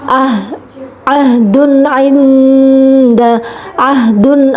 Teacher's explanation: karena ada tanwin bertemu dengan huruf Ain maka cara membacanya adalah jelas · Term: idhar halqi